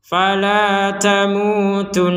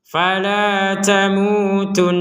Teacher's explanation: Jadi di rongga hidung kita berdengung karena ada tasydidnya di atas nun ini. Kalau di atas nun ini nggak ada tasydid, misalkan bacanya tamutuna, misalkan kan di sini kan misalkan nggak ada nunnya, maka kita membacanya tamutun. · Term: dengungan